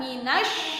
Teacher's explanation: lamnya tidak terdengar bacaannya, langsung dimasukkan ke dalam huruf shin yang bertasydid, dinamakan alif lam syamsiyah.